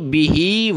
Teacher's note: وَمَن یکفر، وَمَن یکفر بِہ فَأُولَئِکَ، با زیر بی، ہا کھڑی زیر ہی، بِہ، ہا کو یہ کھڑی زیر ہے تو ایک الف کی لمٹ میں نیچے کھینچیں گے